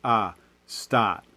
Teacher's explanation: like in boston it tends to move a little bit forward